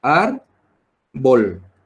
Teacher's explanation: Árbol. Es una palabra que tiene 2 sílabas. Se carga la voz en la primera sílaba de la palabra.